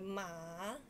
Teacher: if you speak third tone, it will become ma, it's going down and going up.